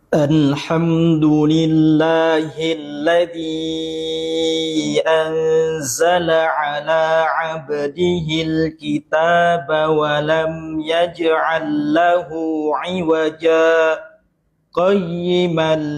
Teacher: harusnya saktanya lebih lebih nampak, lebih ada space jedanya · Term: saktah